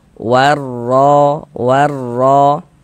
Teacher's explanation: Harakat fathah nih. Nah, maka huruf ro itu dibaca tebal, dibaca tabkhim sehingganya pangkal lisan kita naik terangkat ke atas ketika kita mengucapkannya